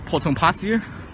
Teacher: there's an R at the end of the word, but the R is silent because it's not followed by another vowel. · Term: non-rhotic